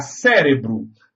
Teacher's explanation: Cérebro é uma palavra que tem a antepenúltima sílaba tônica, ou seja, ela é proparoxítona.